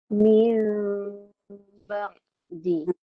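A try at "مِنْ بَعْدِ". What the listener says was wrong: Bibir jangan rapat. Kalau rapat bibir, dia taklah dipanggil secara diikhfakan. Nama dia izharkan. Jadi izhar pula. Jadi mimnya tu tidak boleh dijelaskan makhraj dia. Dah disebut begitu, caranya begitu. Iaitu secara ikhfa kan. Tidak boleh jelas.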